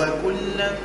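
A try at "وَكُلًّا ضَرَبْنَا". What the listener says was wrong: لا ما تقولش وكلاً، ما تلصقش لسانك الفوق، قول وكلاً ضرب، اللسان مريح أما مهيئ، ايش معنى مريح؟ ما هوش لاصق الفوق فقط، أما مهيئ على الحرف اللي بعده، يعني هو متهيئ على الحرف اللي بعده. وكلاً ضرب، شنو باش ننطق أنا وقت نقول هكا؟ وكلاً شنو باش ننطق زعم؟ ضاد، انا مهيئ لساني وجايب غنه من الخيشوم، هاك الغنه هذيك صوتها مفخم، شفتها كيف؟ انا مهيئ لساني على الضاد، انت كي تسمعني باش تقول هذا باش ينطق ضاد، اما كيف نقول لك هكا؟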